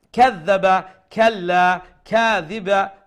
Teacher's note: these are small kaf, and you pronounce it with a flat sound, which is the empty sound.